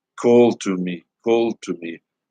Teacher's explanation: a dactylic foot these 3 syllables stress syllable followed by two unstressed